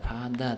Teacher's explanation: Nima uchun mana bu t'miz oddiy t emas, d deb talaffuz qilinyapti? Sababi ikki unli o'rtasida kelyapti, ikkita a o'rtasida kelyapti. Shuning uchun demak pada deb talaffuz qilinyapti.